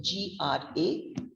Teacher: And this syllable, we are laying emphasis, congrats. Grats is the downward intonation, GRATS.